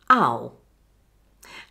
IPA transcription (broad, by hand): aʊ